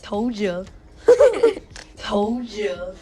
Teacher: When a word ending in D is followed by the pronoun you, they usually morph into a ju. So instead of told you, we hear told you. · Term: sound morphing